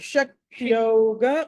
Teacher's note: శక్తోగ ఓ కాదండి, ఔ అండి